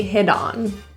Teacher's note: The T in hit becomes a flap T, sounds like a quick D